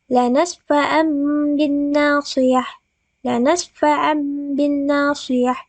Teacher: Tegasnya hukum nun atau tanwin itu membacanya ketika itu dibalik atau ditukar menjadi mim. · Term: iqlab